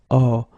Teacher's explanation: you get this o and it's actually quite open